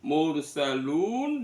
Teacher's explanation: Karena ro sukun sebelumnya ada ee dummah maka rnya dibaca tafhim